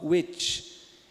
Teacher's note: Parece um W, né, do inglês, só que o W do inglês é o lábio velar